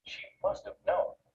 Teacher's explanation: when it comes after another word have usually loses its sound and is linked to the word before it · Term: weak pronunciation of have